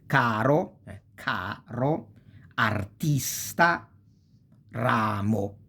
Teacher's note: the phonical accent falls on the second to last syllable